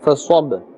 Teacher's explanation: Sod, we are pronouncing with a full mouth. We are not saying fasab.